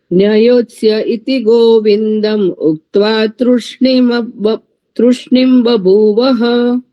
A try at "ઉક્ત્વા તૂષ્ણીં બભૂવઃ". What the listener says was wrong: હા, હવે ત્રુ નથી, તું છે.